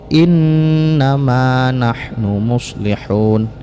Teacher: inna ini dibaca gunnah, dibaca dengung, karena ada 2 huruf yang mempunyai sifat gunnah, yaitu nun dan mim. Gunnah itu artinya dengung, sedangkan makhraj daripada gunnah adalah khaysum.